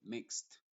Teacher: la e es muda y la d se pronuncia como t